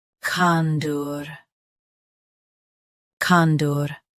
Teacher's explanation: Stress, kan. Keep dur soft and quick.